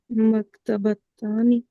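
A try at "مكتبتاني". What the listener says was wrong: नहीं, ता हटा दे, बस आने आने आएगा। मकतबा करके। मकतबानी।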